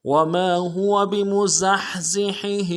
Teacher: بمزحزحه میں زا کو سیٹی ادا کریں گے, ہا کے ساتھ ملانا ہے, ہا کو گہرائی سے ادا کریں گے